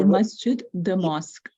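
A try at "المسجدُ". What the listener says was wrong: So remember that whenever there's alif lam, the last letter gets one dhamma, al-masjidu.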